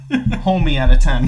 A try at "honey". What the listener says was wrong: Homie. It's not homie. It's honey with an N. H-O-N-I. A honey.